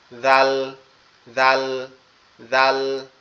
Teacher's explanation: আমাদের জিহ্বার আগা, সামনে দুই দাঁতের আগার সঙ্গে লাগবে, লেগে উচ্চারিত হবে